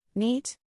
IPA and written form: niːt (Neat)